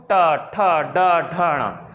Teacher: ट को बोलते समय आप देखिए, हमारी जो जीभ है वो ऊपर वाले हिस्से में लग रही, बीच में से मुड़ जाएगी और ऊपर जाके लगेगी। ऊपर लगते ही आप समझ गए, मैंने आपको बताया कि ऊपर वाला हिस्सा क्या है, मूर्धा है। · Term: मूर्धन्य